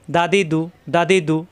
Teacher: দাল যাবর দা, দাল জের দি, দাল ফেস দু, প্রত্যেকবার মাখরাজ ঠিক থাকবে। জিব্বা উপরে দাঁতের গোড়ায় দা, জিব্বা উপরে দাঁতের গোড়ায় দি, জিব্বা উপরে দাঁতের গোড়ায় দু, দা দি দু, জবর আসলে দা, জের আসলে দি, পেশ আসলে দু, দা দি দু।